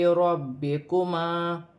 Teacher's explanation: فا ساکن ہے، فا کو نون کے ساتھ ملا کر پڑھا جائے گا، را پر پیش کی حرکت ہے، را موٹی پڑھی جائے گی، میم ساکن میں غنہ نہیں ہوگا۔